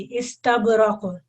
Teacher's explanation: तब पे जो है जुम्बिश कम होगी और काफ पे थोड़ी सी ज्यादा हो जाएगी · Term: कलकला